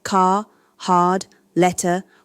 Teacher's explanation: American English pronounces R in all positions, car, hard, letter, while British English systematically lost post-vocalic R. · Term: rhoticity